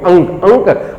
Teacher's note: अब ये अंक हो गया, अंक नाक बंद करके नहीं बोल सकते आप, नाक बंद करके आप अंक नहीं, क्योंकि ये क्या है आपका अनुनासिक है, नाक से हवा आएगी तभी आपका अंक बोला जाएगा